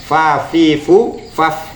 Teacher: makhraj bibir bawah bagian dalam mengenai ujung gigi depan atas